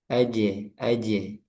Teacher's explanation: Jim itu tertahan suaranya atau syiddah.